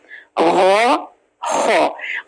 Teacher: गैन और खा गले के बिल्कुल ऊपर वाले पोर्शन से